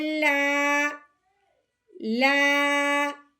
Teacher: الف سے پہلے جب زبر آ جائے تو ہم نے اس کو ایک الف کے برابر لمبا کرنا ہے، تو اب ہم نے لام کو ایک الف کے برابر لمبا کرنا ہے